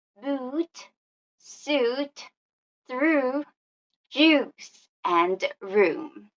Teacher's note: to close our long vowel sounds we have the long sound ooh